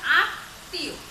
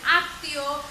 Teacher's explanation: এই যে ত বর্ণের সাথে মফলা যুক্ত হয়েছে, এই তর উচ্চারণটা দুইবার হতে আছে, দ্বিতীয় উচ্চারণ হচ্ছে।